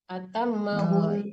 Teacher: Kalau kita berhenti di situ nunnya tetap dengung ya